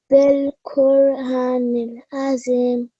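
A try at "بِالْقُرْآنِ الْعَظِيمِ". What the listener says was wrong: So I just corrected you here because we have vertical fatha. Okay, fatha ishbaya on top of alif, and we have to prolong it for 2 seconds, right?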